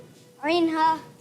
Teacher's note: हलक के दरमियान वाले हिस्से से अदा होता है।